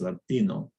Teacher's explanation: the spanish t is not voiced but it also doesn't have this frication after it there's no aspiration so it's latino no h herd so we've covered a lot